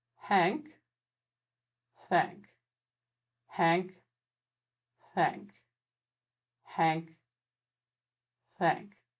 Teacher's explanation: change the h friction sound into a th friction sound by aiming my tongue tip upwards a little